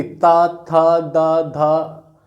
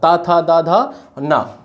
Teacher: ता वर्ग का उच्चारण हमारा दंत से होता है। देखिए जब ता बोलेंगे आप लोग, ता, तो जीभ देखिए दांत में लड़ती है कि नहीं लड़ती, ता था दा धा, ये देखिए ये इस तरह होता है ना, ता था दा धा ना, ता था दा धा ना, ये हो गया।